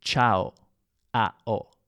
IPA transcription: ʧao